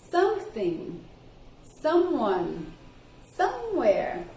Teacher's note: vamos tentar colocar essa sílaba tônica no começo